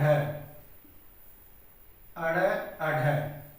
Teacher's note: जब हम इनका उच्चारण करते हैं तो जीभ जो है झटके से नीचे गिरती है, इसलिए इन्हें ताड़न जात उत्सिप्त व्यंजन कहते हैं।